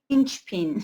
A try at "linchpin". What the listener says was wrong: Yes, linchpin. no, don't say pin. It's not a long E. It's a linchpin, yes.